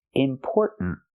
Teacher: The tongue goes up and makes a stop T at the end.